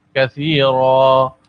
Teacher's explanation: دو زبر وقف کی صورت میں ایک الف کے برابر کھینچ کر ادا ہوتے ہیں